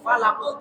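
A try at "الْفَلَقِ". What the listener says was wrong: Jadi jangan slow motion falako, tapi falako, langsung falako, ahad. Ya, kalau yang ada tasdidnya tadi hakko, itu karena ada tasdid. Jadi slow motion, ya, karena qafnya itu harus ditasdid dulu. Berbeda dengan falako. Kalau falako itu harus langsung memantul.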